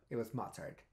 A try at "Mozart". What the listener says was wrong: And it's Mozart, not mustard. mustard. That's what you sound like. No, you didn't say that. It's Mozart.